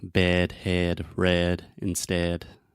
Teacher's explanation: the sound is more closed and more to the center than the a sound